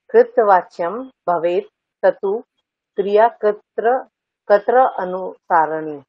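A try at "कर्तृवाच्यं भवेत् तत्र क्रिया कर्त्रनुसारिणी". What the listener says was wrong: সারিণী। ঠিক আছে,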